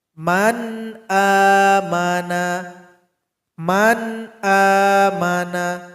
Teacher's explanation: Maka kalau nampak seperti ini maka dibaca jelas tanpa berdengung. Contoh di sini nun sukun berjumpa dengan hamzah, maka dibaca jelas, tidak boleh berdengung. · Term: izhar halqi